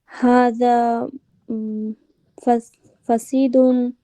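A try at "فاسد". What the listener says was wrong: ফাসিদুন না, ওটা হবে ফাসিদুন। ফায়ের পরে আলিফ হবে, ঠিক আছে? হাযা জাওয়ালুন ফাসিদুন।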